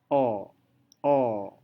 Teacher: Nah, saat Anda mengucapkan O, tanpa Anda sadari, lidah itu terangkat. Lidah itu terangkat dan sedikit menyentuh daerah soft palate. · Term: lateral approximant